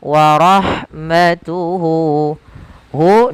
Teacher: ini menandakan itu ya kecil atau kalau di sini wau kecil maka kita panjangkan Hunya dua harakat · lafal ha ketika dia sukun, maka huruf ha-nya itu dialirkan nafasnya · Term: Mad Silah qasirah, mad silah qasira